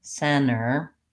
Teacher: making sure that the N is very short then the brain will still perceive that you're saying the word with the T · I don't want to hold that n very long in center or enter if I'm leaving the T out